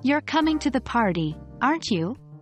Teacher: With a rise in tone on you. In this case, the speaker isn't sure if the person is coming to the party. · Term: Rising intonation, rising intonation